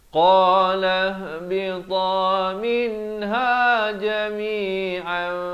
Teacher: Jadi kita tukarkan kepada bunyi nun kepada bunyi mim, daripada jami'an jadi jami'am. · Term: hukum iqlab